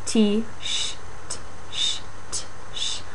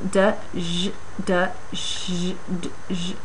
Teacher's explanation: And the D, j, if you put them close together, you get G's, that sort of G's sound. So those are affricates, a stop plus a fricative really close together.